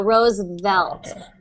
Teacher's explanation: you'll be able to do that V sound just by lightly touching your teeth on your lips